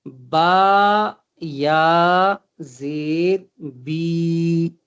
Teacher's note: یا مدہ جب جزم والی یا سے پہلے زیر آئے، جب جزم والی یا سے پہلے یعنی یا ساکن سے پہلے زیر ہو تو یا مدہ بنتا ہے۔ या मद्दा को भी वही एक अलिफ के बराबर खींचकर पढ़ा जाएगा